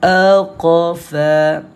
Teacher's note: Dua huruf ni adalah huruf yang tebal. Bila huruf yang tebal, walaupun dinamakan sebagai qalqalah sughra, dia tetap bacaan dia tebal juga.